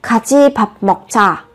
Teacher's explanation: Đây các bạn cũng chú ý nhá, vị trí bắt chim là âm cờ, theo sau là phụ âm chờ, thì các bạn phải đọc gấp đôi phụ âm chờ lên